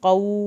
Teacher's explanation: या कौमी, क़ाफ को पुर करना है। क़ौ, वाव साकिन की वजह से हमने खींचा